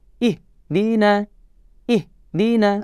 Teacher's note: Jadi huruf ha sifatnya harus dilepaskan. Kalau kita biasa juga dengan ha besar, ya, maka dia keluarnya dari pangkal tenggorokan.